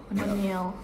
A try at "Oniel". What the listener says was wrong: Ehnya enggak dibaca, guys. Dia hening, silent.